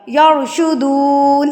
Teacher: یا کے اوپر زبر ہے اس لیے یہ را پر یعنی کہ موٹا پڑھا جائے گا